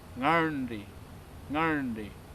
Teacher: Another interesting word is the word for mother, which has two retroflex letters straight after each other.